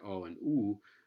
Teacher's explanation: Cantonese has both back rounded vowels like English like oh and ooh